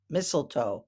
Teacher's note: mlto mlto I know it looks like misto but it's mistletoe that first T is silent